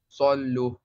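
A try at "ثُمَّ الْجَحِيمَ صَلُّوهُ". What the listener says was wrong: No, but just stretch it, man. Wow, Madda is here. Come on, again.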